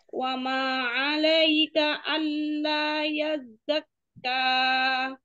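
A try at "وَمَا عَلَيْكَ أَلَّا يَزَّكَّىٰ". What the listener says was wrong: Kayaknya kepanjangan, dua harokat saja.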